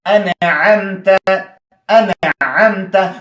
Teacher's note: اوس نه پټوو اوس وایي انعمت ولې مخکې اخفا کېده ځکه د نون ساکنه نه شاته حرف د اخفا و. اوس اظهار کېږي ځکه نون ساکنه نه شاته عین دی. عین حرف د اظهار دی د نون ظاهریږي